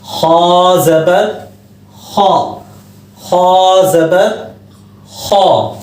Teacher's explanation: बगैर होंठ गोल किए इसको मोटा करना है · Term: मोटा हर्फ